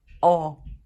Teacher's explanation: os judeus do leste europeu vão falar ele como O. Tipo, aberto. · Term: Kamatz